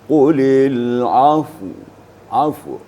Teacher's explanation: setelah mematikan fa, mensukunkan fa, maka bibir kita difungsikan, ya, sedikit diiringi dengan suara nyaris terdengar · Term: sakinain